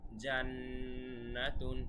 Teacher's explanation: জান্নাতুন এখানে আমরা গুন্নাহ কেন করেছি কেননা নুনের উপরে কিন্তু তাজদিদ আছে আমরা আগেই বলেছিলাম নুন এবং মিমের উপরে তাসদিদ থাকলে অবশ্যই গুন্না